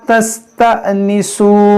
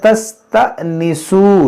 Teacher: ये हमजा साकिना है, इसमें झटका होगा